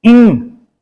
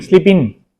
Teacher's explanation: ग का साउंड तो है ही नहीं